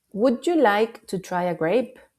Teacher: El tono ascendente indica amabilidad.